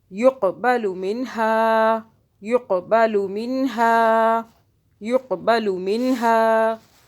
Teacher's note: आगे क़ाफ पे कलकला करेंगे, झटका देंगे।